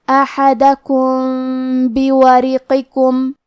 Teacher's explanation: کلمت بورقکم، با حروف الاخفاء میں سے ہے، لہذا ہم میم ساکن کو چھپاتے ہوئے اور غنہ کے ساتھ یہ حکم کو ادا کریں گے